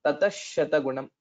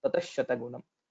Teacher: This visarga will be changed to shakara.